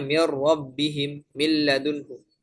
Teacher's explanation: masuknya huruf pertama ke huruf kedua secara sempurna sehingga huruf pertama hilang 100% makhraj dan sifatnya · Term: idgham kamil